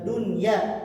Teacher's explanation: Dunya harusnya duya, tapi dikarenakan pengecualian maka diidharkan.